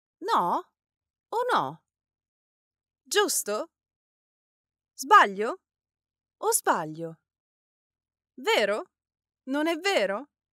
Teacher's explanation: of course have a rising intonation as you say them